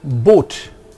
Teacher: A mid-high back vowel O as in Boot